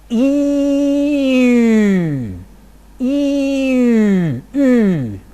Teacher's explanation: cardinal number 9, a rounded front vowel · So here is cardinal number 9. I first produce cardinal number 1, E, and then I round my lips